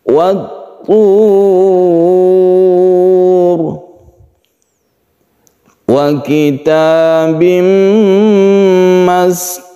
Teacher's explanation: Arid artinya menghadapi, lis-sukun huruf yang disukun atau diwakafkan. Ada ro di sini yang kita sukun sehingga ro-nya itu menjadi tebal karena sebelumnya ada dhammah.